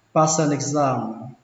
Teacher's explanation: chúng ta có thể nối chữ sờ này với chữ an thành passer